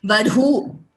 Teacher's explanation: Like I said, both Mahaprana and Ghosha there.